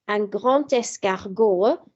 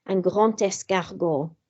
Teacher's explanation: the D changes to a T sound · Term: liaison